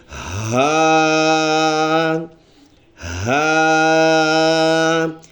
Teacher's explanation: یہ لفظ ان حروف میں سے ہے جو گلے کے آخری حصے جو سینے کی طرف ہے اس سے ادا ہوتا ہے، اور اس لفظ کو پڑھتے ہوئے گلے سے سینے سے آواز نکالنا ہوتا ہے، ایسے آواز جیسے مریض بندہ آواز نکال لیتا ہے اور کراہنے کی آواز نکال لیتا ہے، تو ایسے ہا ہا، ایک الف کے برابر ہم نے اس کو لمبا کر کے پڑھنا ہوگا۔